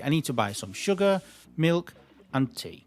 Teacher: My intonation went down to basically confirm the fact that I was finishing my list. So everything in the list rises until the last thing in the list.